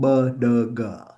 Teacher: One of the key linguistic feature is implosive sound